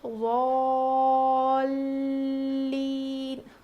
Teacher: یہاں پر لام پہ تشدید ہے تو یہاں پر ہم تھوڑا وزن روکیں گے